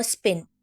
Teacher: स्पिन में पी अन एस्पिरेटर है उसमें कोई हवा का झटका नहीं निकलता